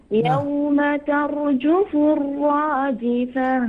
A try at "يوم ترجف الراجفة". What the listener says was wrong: لا تحاول تكرر الراء بزيادة. يوم ترجف الراجفة.